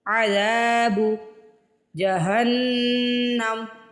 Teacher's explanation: ہا کو نون سے ملانا ہے، نون پہ تشدید ہے۔ میم پہ اور نون پہ تشدید کی صورت میں ہم کیا کرتے ہیں، غنہ کرتے ہیں، تھوڑی دیر لگاتے ہیں اور آواز ناک میں لے کے جاتے ہیں۔